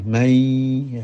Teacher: Mestinya nun kalau mati umpamanya man, ya harus dibaca jelas man, ya. Tapi karena kemudian bertemu dengan ya, maka berubah menjadi mai